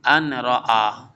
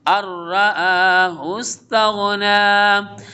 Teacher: ادغام ملون ہے، نون ساکن کے بعد را کمنگ ہے تو یہاں پہ نون کو را کے ساتھ جوائن کر دیں گے. الرآ نہ کہ ان رآ، اس کو پڑھیں گے الرآہ استغنی.